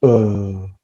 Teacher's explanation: it's neutral and it's central it's literally in the middle of all your oral cavity your lips are super relaxed to pronounce schwa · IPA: /ə/